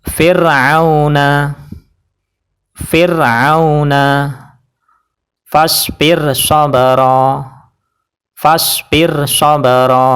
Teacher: fasbir dengan shobron itu adalah dua kata yang terpisah jadi rnya dibaca tarkik atau tipis Yaitu cukup pakai lidah saja dan bibir tidak terangkat